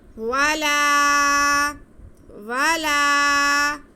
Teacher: الف سے پہلے زبر اور الف مدہ ہوتا ہے، اس لیے ہم لام کی آواز کو ایک الف کے برابر کھینچیں گے